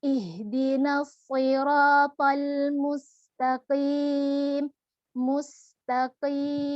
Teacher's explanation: angkat pangkal lidah kita menempel pada langit-langit yang lunak. Kalau tadi kaf pada langit-langit yang keras, ini qaf belakangnya pada langit-langit yang lunak.